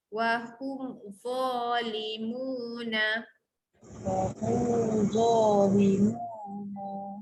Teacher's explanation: hum lepas tu za lidah keluar tebal